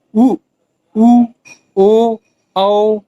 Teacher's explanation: जब स्वरों के उच्चारण में ओठ की स्थिति गोल हो जाती है तो वह वृत्तमुखी स्वर कहलाते हैं